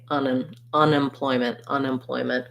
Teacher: would say that one we can't link quite as much because unemployment has two unstressed syllables before we get to the ploy